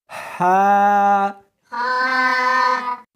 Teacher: اس کو حلق میں سے نکالنا ہے اور ساتھ میں ہوا بھی ہونی چاہیے